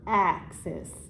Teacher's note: our first syllable is what we say a little more emphasis on, which we say a little stronger. Axis. So ax is the stressed one.